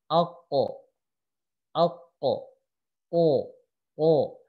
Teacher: Huruf qaf ini ya pangkal lidahnya ngangkat. Aqo, aqo, o, nah, ngangkat.